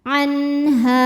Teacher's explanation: Maka nun sukun dibaca dengan jelas atau dinamakan atau disebut dengan terang ya, terang, jelas. Nunnya tidak ditahan. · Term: izhar halqi